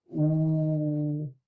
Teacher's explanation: the waw has the sound of oo, oo. And it's very important that there is a circling of the lips with the sound coming from the empty space of the mouth. Now there must be a circling of the lips, remember.